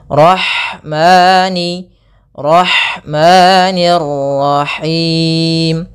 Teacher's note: Kemudian ada lafal ha, alirkan nafasnya pada lafal ha karena di sini ada hukum tajwid berupa ada sifat huruf ha yang itu sifat hamas, mengalirnya nafas.